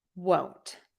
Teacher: when I'm saying won't my lips tend to stay a little more rounded and that has to do with the vowel so want won't